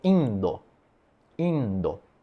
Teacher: E tem o D, né, que é a versão sonora do T, aí vira, por exemplo, indo.